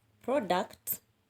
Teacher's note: two syllable word you will stress the first syllable for example a word like product is a noun so you shall stress the first syllable